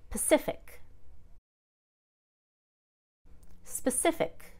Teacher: but when we change it to pacific with an ic ending the pa just becomes almost nothing